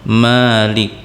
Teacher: Di kalimat Maliki yaumiddin itu ada huruf mim, yang mana huruf mim di situ memiliki baris fathah yang memanjang, yaitu sepanjang 2 harokat